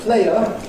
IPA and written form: ˈpleɪə (player)